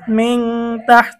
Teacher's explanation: নুন সাকিনের পরে তা আসছে, ইকফার হরফ গুন্না সহ পড়তে হবে।